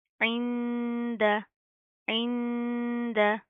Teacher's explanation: इंद, ऐन नून ज़ेर, ऐन, दाल ज़बर दा, इंद, इंद, नून साकिन है, उसके बाद हरूफ इख्फा में से दाल आ रहा है तो यहाँ पर क्या होगा, इख्फा, यानी कि अगेन साउंड इन नोज